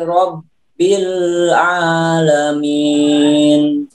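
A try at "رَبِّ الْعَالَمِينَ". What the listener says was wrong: Jangan kehidung. Ya, di mad. Mad. Kan ada mad ya. Mad itu tidak kehidung. Yang kehidung itu mimnya pertama. Tapi kan tidak dipanjang. Tapi ya dipanjangkan itu mad dan tidak kehidung. Kemudian nanti diakhiri dengan nun lagi.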